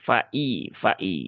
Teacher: Maka tunaikan hamzahnya dengan sempurna ya. Dan pastikan tidak ada suara imalah atau miring menjadi faidza tapi fai fai ya.